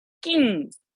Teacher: nasal so this sound is yeah so i'm not saying no i'm not using the tongue tip i have to go to the throat and get the sound out through the nose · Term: the ng sound